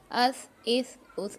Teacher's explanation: इसमें सीटी की आवाज नहीं निकलनी चाहिए बिल्कुल भी बिल्कुल हल्का पढ़ना है